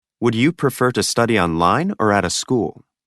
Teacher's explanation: Having a rising intonation for the first ones and a falling intonation for the last ones. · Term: Intonation in questions of choice